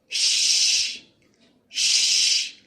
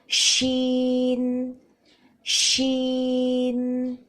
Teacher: اس کے بعد ہے شین. حرف شین کی ادائیگی کے لیے زبان کے درمیانی حصے کو اوپر کے تالو کی طرف بلند کیا جاتا ہے. ش اس طرح پھیلتی ہوئی آواز سنائی دیتی ہے.